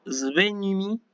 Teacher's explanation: sigma beta sí que es al principio de palabra que ahí la sigma suena un poquito más sonora como si fuera una zeta